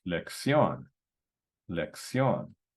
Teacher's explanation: So this word is lección, accent on the O, and we have the diphthong, the IO.